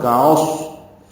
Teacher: ہم میں ہا اقصى حلق سے ادا کریں گے، میم ساکن پہ اظہار شفوی ہے، فجعلہم کعصف میں کاف باریک ہے، عین وسط حلق سے ادا ہوگا، صاد پر ہے موٹا پڑھیں گے اور صاد ساکن پہ ہمس ہوگا